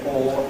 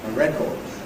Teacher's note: Most British people say for the noun a record, where, strangely enough, we don't get weakening of the second vowel. We still say or in that unstressed syllable